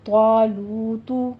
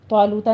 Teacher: کھینچیے، ٹو count کرنے ہیں ہونٹوں کو گول کرتے ہوئے، طالوتو آخر پہ ضمہ ہے، ہونٹ گول کیجیے گا